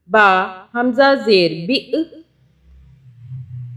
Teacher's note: बा हमज़ा ज़ेर बि, हमज़ा पे झटके से पढ़ेंगे